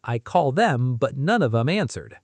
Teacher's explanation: Them often becomes 'em in fast speech. The th sounds disappear completely.